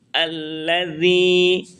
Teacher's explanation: الذي ذال زبان کا کنارہ اور اوپر کے دانتوں کے اندرونی حصے سے ذال ادا ہوتا ہے. ذال زبان کا کنارہ اوپر کے دانتوں کی جڑ کے اندرونی حصے سے ذال ذال ادا کرتے ہیں